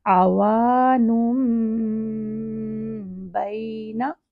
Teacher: تو آوانن سے بن جائے گا آوانم بین، اور اس میم کو پھر ٹو حرکت تک ہم نے ہولڈ کرنا ہے، اور اس رول کو کہتے ہیں اقلاب۔ · واو ٹو حرکت کے ساتھ ہے، کیونکہ واو کو زبر کے ساتھ الف دی ہے تو واو الف زبر وا، آوانن۔ اور جب تنوین کے بعد آگے با آ جائے تو وہ جو آوانن، اس کا جو نون ہے وہ میم بن جاتا ہے، اسی لیے اوپر اسمال میم لکھا جاتا ہے۔